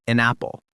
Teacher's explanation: >> It comes out sounding like an apple. Those two words merge and basically become one smooth sound. No choppy breaks. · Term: connected speech